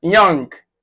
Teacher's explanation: Short central vowel sound.